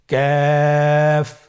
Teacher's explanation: কাফ উচ্চারণের ক্ষেত্রে অবশ্যই পাতলা করে উচ্চারণ করতে হবে এবং তিন আলিফ টেনে পড়তে হবে। · কাফের মাখরাজ আমরা স্ক্রিনে দেখতে পাচ্ছি। কাফের মাখরাজ হলো জিহ্বার গোড়া থেকে একটু আগে বাড়িয়ে তার বরাবর উপরে তালের সঙ্গে লাগিয়ে উচ্চারিত হয়।